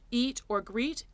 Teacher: our front vowels are the long-closed e in english eat or greet